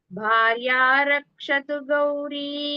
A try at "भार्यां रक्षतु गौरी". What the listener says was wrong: भार्यां इम्म वच्चुकोंगा.